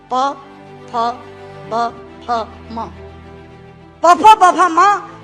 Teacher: प, फ, ब, फ, म दोनों होंठ मिलाकर बोले जा सकते हैं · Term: ओष्ठांग